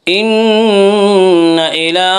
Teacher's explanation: ان نون مشدد غنہ ہوگا، غنہ کی مقدار ایک الف ہے۔ ان الی، لام کے اوپر کھڑا زبر ہے، کھڑا زبر کو ایک الف کے برابر کھینچ کر پڑھیں گے۔